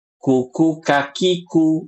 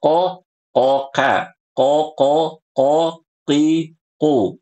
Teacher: Kalau qof adalah pangkal lidah nempel ke langit-langit yang lunak. Sedangkan huruf kaf pangkal lidah nempel ke langit-langit yang ke keras.